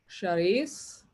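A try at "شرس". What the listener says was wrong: When it's a single vowel, don't make it a double.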